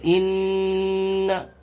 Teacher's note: نون کے اوپر تشدید ہے، اس لیے نون میں غنہ ہوگا، ناک میں آواز کو چھپا کر پڑھیں گے